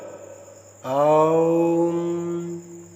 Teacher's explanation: यह स्वर दूर से पुकारने के लिए प्रयुक्त होता है। उच्चारण में अंतिम स्वर को खींचकर लंबा कर दिया जाता है। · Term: प्लुत स्वर